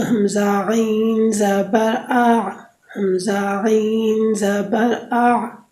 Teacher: حلق کے درمیان سے عین ادا ہوتی ہے